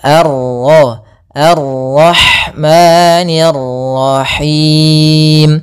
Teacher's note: fathah bertemu Alif panjangnya dua harakat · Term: Mad thi'i